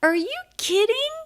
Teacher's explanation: pitch goes up yes no question